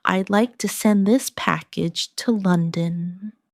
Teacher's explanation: Keep package to London flowing without a pause.